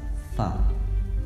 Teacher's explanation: Tempat keluar huruf fa adalah bibir bagian bawah yang bertemu dengan gigi seri atas, ya. Bibir bagian bawah bertemu dengan gigi seri atas, fa.